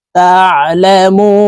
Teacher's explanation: হবে কারণ মদের হরফের বামের হরফে ওয়াকফু আছে এই কারণে এই মুকে তিন আলিফ টেনে নুনকে সাকিন করে ফেলবো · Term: মধ্যে আরজি